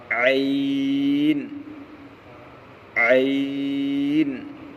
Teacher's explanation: عین کا مخرج حلق کا بیچ والا حصہ